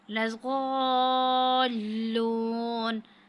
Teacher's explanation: الف پہ مد ہے تو یہاں پہ ہم جو ہے نا مد کو 5 الف کے برابر کھینچیں گے، اور لام پر جو ہے شد ہے، مد کے کر کے پھر اس کو ساتھ والے حرف کے ساتھ ملانا ہے۔